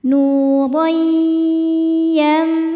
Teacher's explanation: Hukumnya adalah idgham bighunah. Karena ada tanwin fathah berhadapan dengan ya, maka tanwin ini dibacanya masuk ke ya. Nur sambil didengungkan tahan.